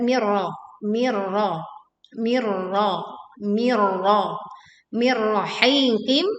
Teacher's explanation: Ra ini adalah ra tebal. Sebelumnya nun sukun bertemu dengan ra kita leburkan tanpa disertai dengung.